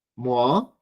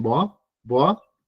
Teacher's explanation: la M tienden a pronunciarla al principio de la palabra como una B